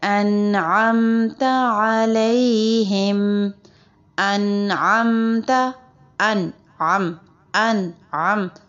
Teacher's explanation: تو عین آپ نے وسط حلق سے نکالنا ہے